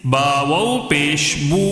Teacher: اس کو کیسے پڑھیں گے؟ ایک الف کھینچ کر پڑھیں گے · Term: واو مد